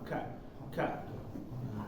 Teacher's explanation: Ka tapi jangan terlalu banyak ka ka jangan terlalu banyak ya jadi kayak ada angin loncat sedikit dari belakang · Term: Kaf